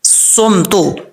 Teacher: صاد حروف مستعلیہ میں سے ہے، پر پڑھا جائے گا یعنی موٹا پڑھا جائے گا، اور اس میں سیٹی بھی آئے گی کیونکہ یہ حروف صفیریہ میں سے ہے، اس کو ایسا نہیں